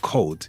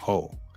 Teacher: the dropping of a final consonant. So instead of cold you may hear coal or instead of hold you may hear ho.